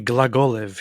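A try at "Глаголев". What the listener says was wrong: You're supposed to say it like this. Glagolev.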